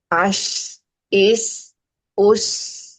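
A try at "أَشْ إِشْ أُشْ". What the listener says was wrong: Itu masih mirip dengan sin. Ada mirip dengan sin. Belum dikeluarkan sepenuhnya itu tafashinya.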